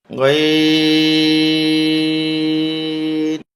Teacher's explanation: হরফটার আওয়াজ মোটা হবে, বাংলা গোয়ার সাথে আকার হবে না, দীর্ঘই দিয়ে 4 আলিফ টেনে তারপরে দন্ত ন।